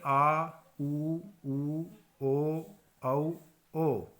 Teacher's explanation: पश्च स्वर यानी कि जीभ के पिछले हिस्से का प्रयोग जिसको बोलने में किया जाता है उन्हें हम पश्च स्वर कहते हैं।